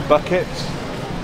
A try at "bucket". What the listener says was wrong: No, it's bucket. You gotta pronounce the K. Bucket.